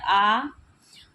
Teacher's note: मुख्य विवर के आधार पर स्वर इस तरह से विवृत स्वर है